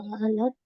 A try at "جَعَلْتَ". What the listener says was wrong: जालता, जालत नहीं बनेगा क्योंकि ता पे जबर हम लगा रहे हैं। जालता, आपने या तूने बनाया।